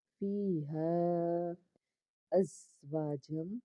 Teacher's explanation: ہا الف مد زبر ہے، تین الف کے برابر اس کو کھینچنا ہے کیونکہ مد ہے